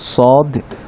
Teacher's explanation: সদ, সদ শব্দটা উচ্চারিত হয় জিহ্বার আগা নিচের দাঁতের গোড়ার সাথে লেগে সদ উচ্চারিত হয়, এবং সদ একটা মোটা শব্দ, সদকে উচ্চারণ করতে হলে আমাদেরকে জিহ্বার পিছনের সাইডটাকে উঠিয়ে দিতে হবে, তখন বাতাসটা মোটা করে আসবে। এবং সিন এবং জা সেম জায়গা থেকেই উচ্চারিত হয়, কিন্তু এরা দুইজন চিকন তীক্ষ্ণ হওয়ার কারণে জিহ্বার অংশটা ফ্ল্যাট থাকবে, তবে সদ জিহ্বার পিছনের অংশ উঠে যাবে যেহেতু সদ শব্দটা মোটা।